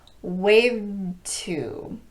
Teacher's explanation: doesn't get released so you mainly hear the T wave 2. I'm positioning for the D and I'm keeping my voice on momentarily and then I'm releasing in a t sound · because D and T are pronounced with the tongue in the same position the D doesn't get released so you mainly hear the T